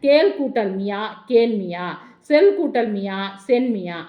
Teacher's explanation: அப்போ இதில் வருகின்ற மியா அப்படிங்கிற வருகின்ற இகரத்தில் வருகின்ற மாத்திரை அளவுங்கிறது அரை மாத்திரையாக குறைந்து ஒலிக்கும். இந்த குற்றியல் அதாவது இந்த கேன்மியா சொல்மியா அதெல்லாம் உரைநடை வழக்கில் இல்லை, இலக்கியங்களில் மட்டுமே இருக்குது.